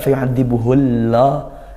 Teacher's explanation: tebal-tebalnya dari pangkal lidah dinaikkan dan lafaz Allah panjang